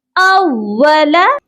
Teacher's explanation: حمزہ کو واو کے ساتھ سختی سے ملا کر پڑھا جائے گا